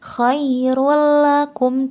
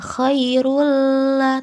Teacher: lakum terdapat roh yang berharkat dhommatain bertemu dengan huruf lam maka cara membacanya dengan memasukkan tanwin ke dalam huruf lam tanpa dengung khoirullakum tidak boleh dengung tidak ditahan tidak Choirul lah tetapi khoirullakum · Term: idgham bilagunnah